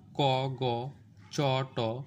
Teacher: যে ধ্বনি উচ্চারণের সময় ফুসফুস থেকে কম পরিমাণের বাতাস নির্গত হবে এবং মুখের কাঠিন্য তুলনামূলক কম থাকবে, সেগুলো হলো অল্পপ্রাণ ধ্বনি।